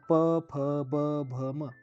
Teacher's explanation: ओष्ठ म्हणजे जे अक्षर उच्चारताना, व्यंजन उच्चारताना ओठांचा उपयोग जास्त होतो. जसं प, फ, ब, भ, म दोन्ही ओठ एकमेकांना लागतात.